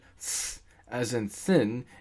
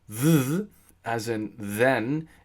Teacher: This is called voicing, because th as in thin is unvoiced, and th as in then is voiced